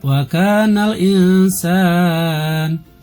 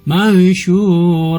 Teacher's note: jadi pembacaannya dengan samar tidak terdengar jelas huruf nun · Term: ikhfa